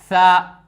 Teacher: सा का मखरज है दोस्तों जुबान का किनारा और सनाया उलिया और सनाया सुफला के किनारे से